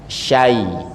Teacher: Mungkin karena habis shin ketemu dengan huruf ya yang dia ini satu makhraj. Shin dengan ya itu satu tempat keluar, ini tengah lidah. Syai ya, habis sya buka balik lagi ke tempatnya.